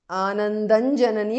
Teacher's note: Anandan janani because of Sandhi. Anuswara changes to Nu there.